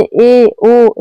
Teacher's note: अर्ध संवृत स्वर जिन स्वरों के उच्चारण में मुख द्वार आधा बंद रहता है उसको अर्ध संवृत स्वर कहते हैं।